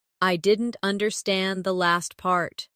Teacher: Stress last part to focus the listener's attention.